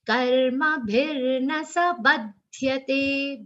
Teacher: Ba, give that aghat of ba. In this whole second line, there is only one stress, one aghat, that is on ba.